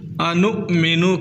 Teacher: حمزہ ساکن ہے، یہ واو نہیں ہے، یہ حمزہ ہی ہے. واو کے اوپر یا کے اوپر یا الف کے اوپر حمزہ ہو تو واو الف وہ یا نہیں ہوتے بلکہ وہ حمزہ ہی ہوتے ہیں.